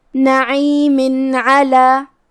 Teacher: کلمت علی میں حرف العین کو ہم حلق کے درمیان والے حصے سے ادا کریں گے